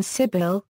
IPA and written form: ˈsɪbəl (sibyl)